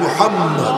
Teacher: ওই নামটা যে উচ্চারণ করবে, উচ্চারণ করতে সময় দুইবার দুই ঠোঁট মিলে যায়